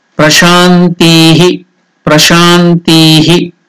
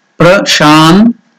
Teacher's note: Tihi, ti is also elongated. Sha and ti are elongated there, so it is dirgha.